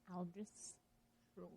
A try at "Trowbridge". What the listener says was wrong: Are you saying Troll? Are you saying Trollbridge with 2 L's? Trowbridge.